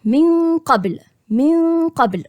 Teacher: هنطق النون ولكن هخش على القاف، مش هقفل المخرج وبعد كده اخش على القاف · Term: الإخفاء